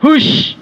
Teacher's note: Dan dia tidak berdesisnya tidak terlalu bunyi, ya. Kalau sya, sifat hurufnya tafasyi. Tafasyi itu menyebar angin.